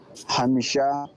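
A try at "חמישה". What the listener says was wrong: Well done.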